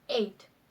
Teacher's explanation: we produce a sound for example to produce the word eight we go from the mid front vowel sound e to the high front vowel sound e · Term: diphthong